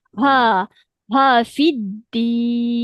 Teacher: Huruf ha mesti keluar dia punya angin. Hams.